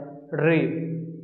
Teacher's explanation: री को हम लोग मूर्धन्य बोलते हैं क्योंकि इसमें हमें अपने जीभ को मोड़ना पड़ता है